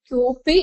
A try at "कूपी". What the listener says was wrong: क्यूपी இல்ல கூப்பி.